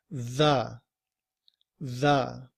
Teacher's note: The word the in IPA begins with this symbol here, which is the TH sound that we make when we're also using our voice